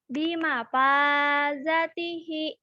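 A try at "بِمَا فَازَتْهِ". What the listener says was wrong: Hi-nya panjang non. Bima fazatihi.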